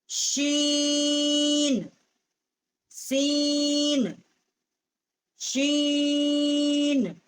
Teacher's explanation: اور شین جو ہے یہ واسطے زبان اور اوپر کا تالو جو ہے وہاں سے اس کا مخرج ہے شین